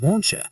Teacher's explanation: But when you understand that it's catenation causing the t and y to merge into a cha sound